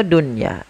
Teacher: Ya, maka apabila ada nun sukun terdapat dalam satu kata, maka ia tidak dibaca dengan bacaan idgham. Akan tapi kita membaca dengan bacaan izhar mutlak, yaitu suara nunnya harus dibaca dengan jelas.